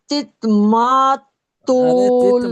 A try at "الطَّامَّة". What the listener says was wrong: ماں تو نہیں، توم ماں ہے نا. اب تا لام پیش تل ہے، تا کو لام سے ملایا.